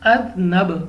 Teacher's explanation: با ہمارے پاس حروف قلقلہ میں سے ہیں تو ہم نے واپس لوٹتے آواز کے ساتھ پڑھنا ہے